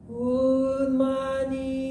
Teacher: Unmani pronounced in a high tone